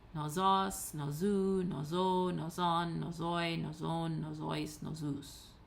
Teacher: the accent is on the penult, so it maintains itself on the penult all the way down the declension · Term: acute on the penult